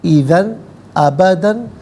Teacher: اذن میں ذال پر 2 زبر کی تنوین، اس کے بعد حرف حلقی حمزہ ہے تو یہاں تنوین کو اظہار کے ساتھ پڑھیں گے، اخفا یا غنہ نہیں کیا جائے گا